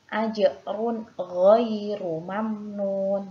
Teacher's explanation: huruf ra ketika berharokat dhammah maka harus dibaca tafkhim atau tebal